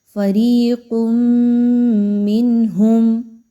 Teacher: ایک حرف کی آواز کو یعنی تنوین کی آواز کو میم کی آواز کے ساتھ ملایا جائے گا غنے کے ساتھ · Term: ادغام مع الغنہ